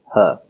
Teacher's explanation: the glottal aspirated consonant, or the glottal ha.